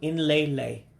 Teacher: So N is its own syllable. So it's a N, then lay.